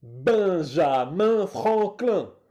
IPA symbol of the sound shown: ɛ̃